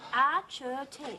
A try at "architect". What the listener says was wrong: Yes, I know, but it's pronounced with a K. It's not arch, it's ark. You know, like Noah had.